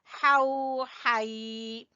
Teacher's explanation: गले के दरमियान से हा अदा होगा